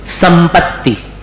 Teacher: दोनों ओठ को मिलाकर करते तो अनुस्वार को भी उसी में जोड़ना पड़ेगा, संपत्ति, तो म जैसा हो गया।